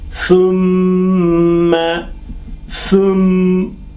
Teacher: when we come to mim, we got to close the mouth and pass the sound through the nose for 1 or 2 seconds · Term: ghunna